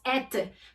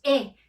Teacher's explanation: Siempre e. Esa t al final no la vamos a pronunciar, entonces siempre diremos e.